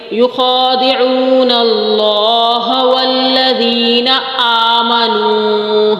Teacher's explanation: اللہ کے نام سے پہلے زبر آ رہا ہے تو اس کو موٹا پڑھیں گے